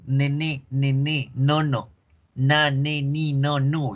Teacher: fíjense cómo la punta de la lengua toca los alveolos y como la lengua bloquea el aire se va por la nariz. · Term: sonido nasal alveolar